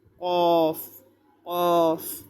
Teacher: জিহ্বার গোড়া তার বরাবর উপরে তালুর সঙ্গে লাগাইয়া 2 নোক্তাওয়ালা কফ।